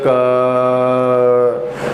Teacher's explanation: क बोलने के बाद में जो पीछे ध्वनि आ रही है वास्तव में किसकी आ रही है अ की